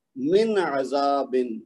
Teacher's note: لمبا نہیں کرنا، اس کو غنہ نہیں ہونے دینا، اظہار کرنا ہے نون ساکن کا